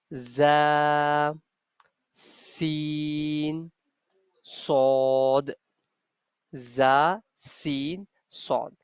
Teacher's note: We are using tip of the tongue here, and we are using edges of our bottom front teeth.